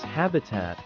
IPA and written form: ˈhæb.ɪ.tæt (habitat)